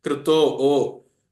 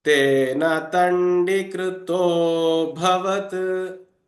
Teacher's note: you just have to slightly elongate the previous swara, which is in this case krito o